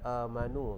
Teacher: Okey, amanu itu namanya mat badal, panjang dia 2 harakat.